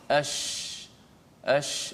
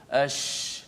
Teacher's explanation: Dia hanya ash, boleh lihat mulut saya, ash, kerana makhrajnya di tengah lidah. Bila terangkat ke langit dan suara tu hemburan daripada mengena belakang gigi atas, belakang gigi bawah, kemudian dia memenuhi mulut, jadilah sifat tafasyi